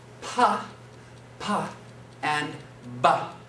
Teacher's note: They're actually the same manner of articulation, bilabial, two lips. Pa, ba. The only thing that makes those two sounds different is in the vibration.